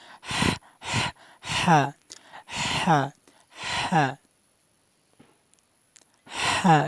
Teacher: হলকের মধ্যখান থেকে, মানে গলার মধ্যখান থেকে উচ্চারণ হবে